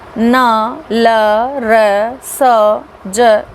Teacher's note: वत्स्य मसूड़े या वत्स की सहायता से उत्पन्न ध्वनियाँ वत्स कहलाती हैं।